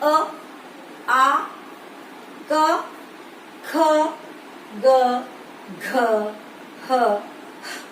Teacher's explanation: अ, आ, क, ख, ग, घ, ह, ह की साउंड ह की आती है विसर्गों में भी, तो इनका उच्चारण स्थान है कंठ। और कंठ का उच्चारण स्थान होने के कारण इन्हें ही कंठ्य वर्ण भी कहा जाता है